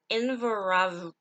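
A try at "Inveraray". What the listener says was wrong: I think it's that extra R.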